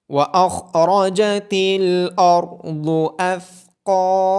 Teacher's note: خا، را، ضاد اور قاف کو موٹی آواز کے ساتھ پڑھا جائے گا۔ ثا کی آواز نرمی سے ادا ہوگی اور ہا قاف کے بعد الف مدہ ہونے کی وجہ سے قاف اور ہا کو لمبا کیا جائے گا۔